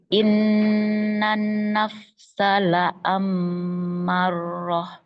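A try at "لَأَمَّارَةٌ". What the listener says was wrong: Enggak tasdid. La'ammarah.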